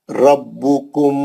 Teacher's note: रा मोटा, पहली कंडीशन है मोटा पढ़नी, रा पे जबर है